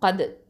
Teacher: தால் சுக்கூனுங்கும் போது இது இந்த தால் வந்து தரஃபுல் லிசான், நுனினாவை எழுத்து. இதில் சுக்கூன் வரும்போது இது கல்கலத்து சுகரா, லேசாக அசைச்சு ஓதணும்.